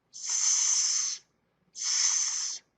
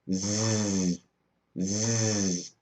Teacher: They are the same, except when I make the Z sound, my throat vibrates. · My throat is not vibrating, but when I make a Z sound, Z, Z, my throat begins to vibrate.